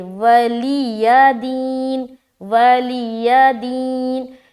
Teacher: آگے ولی دین، یہاں پر غلطی ہوتی ہے، اکثر و بیشتر لوگ یہاں غلط پڑھتے ہیں لکم دینکم ولی دین، ولی دین، ولی دین ایسا پڑھتے ہیں، یعنی کہ یا واضح نہیں ہوتا، یا کو واضح کرے ولی دین، ولی دین، یا بھی واضح، اور دی میں یا مدہ کر کے اسٹاپ کریں گے